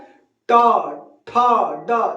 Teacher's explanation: ट ठ ड ढ सब में जीभ आपकी आगे मुड़ रही है · तालू के तरफ जीभ हमारी आगे से मुड़ ऊपर जाकर टच करती है उसी को मुर्धा कहते हैं बोलिए ट एक बार ट ठ ड देखिए जीभ का अगला